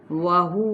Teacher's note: واو ہونٹوں کی ناتمام گولائی کے ساتھ